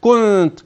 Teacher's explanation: ولا تنطق بالنون على انها نون مشدده لا انها نون مخفاه فحكم النون هنا التي وقع بعدها تاء في كلمه كنت اخفاء حقيقي